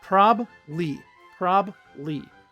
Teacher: Native speakers remove the second B